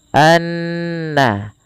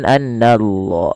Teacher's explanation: Kemudian pelafal annallaha ada bacaan ghunah yang di mana ghunahnya adalah dimasukkan ke rongga hidung kita suaranya anna ya dan dia ditahan sepanjang dua harakat. Hati-hati jangan menebalkan huruf na karena na sifat pada dasarnya sifatnya tipis. Anna bukan annall gitu ya.